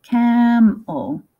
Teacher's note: We don't really hear that second E, do we? I mean, this E. Camel. It's kind of a schwa sound, I think.